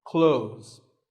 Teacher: Well, first of all, this word is not cloths. When we say clothes, the TH in the middle can often be silent.